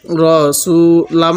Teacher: এই মিমের মধ্যে আমরা গুন্নাহ করবো কারণ মিমের উপর তাজদিদ থাকলে সেখানে আমাদের গুন্নাহ করতে হবে